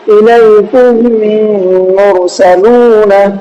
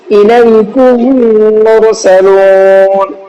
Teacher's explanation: میم کو میم سے ملا کر کے غنہ کریں گے۔ آپ کاف میم پیش کم، الیکم، میم را پیش مر، الیکم مر، سین زبر سا، لام و پیش لو، الیکم مرسلو، نون زبر نا، الیکم مرسلون۔